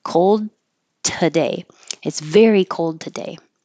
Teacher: So even though there's not really a connection, there's a stop from the D, cold, and then you don't release the D, you hold it and make the release with the today.